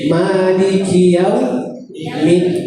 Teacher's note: perkataan ma ni tidak boleh lebih daripada 2 harakat ya